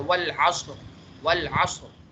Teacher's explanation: आप देखें तो वल असर, के सबसे पहले क्या है कि रॉ साकिन है और उससे पहले भी साकिन है और उससे पहले ज़बर है, तो यहाँ पे क्या है, रॉ को मोटा करके पढ़ा जाएगा